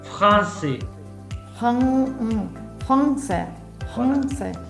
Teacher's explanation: La N no es la N español, es una nasalización.